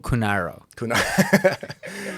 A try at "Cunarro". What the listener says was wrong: just stop rolling those R's.